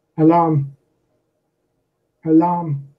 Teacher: because it doesn't have to stress on the first syllable alarm alarm has the stress on the second syllable